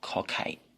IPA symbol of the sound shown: kʰ